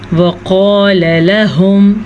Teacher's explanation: لام زبر لا اور پھر آگے بھی لام زبر لا، تو دونوں کو ہم لمبا کر کے نہیں پڑھ سکتے